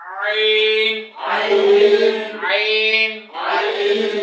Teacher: চাপ দিয়ে। গলার মাঝখান থেকে কিভাবে উচ্চারণ হয়? চাপ দিয়ে। চাপ দিয়ে উচ্চারণ হয়। · ওই ধানের শীষের গোটা না ফাটানো পর্যন্ত যেমন বাঁশি বাজে না, আপনার গলা চাপ না দেওয়া পর্যন্ত আইন উচ্চারণ হবে না